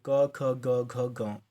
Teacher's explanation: कंठ व्यंजन यानी कि जन व्यंजनों की ध्वनियों के उच्चारण में जीवा के पिछला भाग यानी कि कोमल तालू जो होती है को स्पर्श करती है